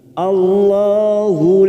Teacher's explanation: lam jalala yang didahului fathah Allah maka kita baca tafkim